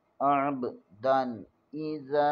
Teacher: زال زبر کے آگے حروف مدہ ہے، اسے ایک الف کے برابر کھینچیں گے